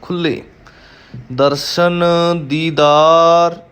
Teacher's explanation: ਖੁੱਲ੍ਹੇ ਲੱਲੇ ਦੇ ਪੈਰ ਵਿੱਚ ਹਾਹਾ ਹੈ, ਹਾਹੇ ਦੀ ਟੋਨ ਦੇਣੀ ਹੈ ਲੱਲੇ ਨੂੰ